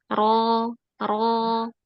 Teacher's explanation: Jadi pangkal lidahnya naik, kemudian tengah lidahnya cekung. Terus ada terjadi penyempitan di tengah tenggorokan. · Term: tafkhim